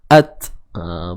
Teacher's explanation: Sifat hams tu ada. Cuma ianya akan lebih jelas kedengaran ketika waqaf, ketika ianya mati.